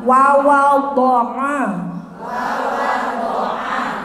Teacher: Ingat, ainnya di tenggorokan.